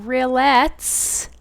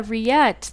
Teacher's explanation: no L sound, no S sound